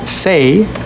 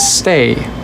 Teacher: The difference between say and stay is actually a little pause right when the t happens.